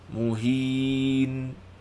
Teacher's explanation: Tu nun hujung tu jangan panjangkan. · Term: dengung naqisah